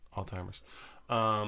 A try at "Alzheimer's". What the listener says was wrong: It's a Z, by the way, not a T. It's Alzheimer's.